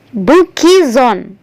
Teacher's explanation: Jadi S-nya berubah menjadi EZ, kemudian digabung dengan on